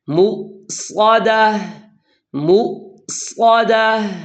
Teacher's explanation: یہاں پر صاد ادا کرنا ہے، صاد، اور یہ موٹے حروف میں سے ہے، اسے موٹا ادا کرنا ہے۔ · زبان کی جڑ اور زبان کا درمیان جب اوپر تالو کی طرف اٹھیں گے تو پھر صاد موٹا ادا ہوگا